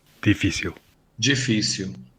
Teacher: You can also hear the Brazilian L as it's pronounced at the end of a word or syllable, like w.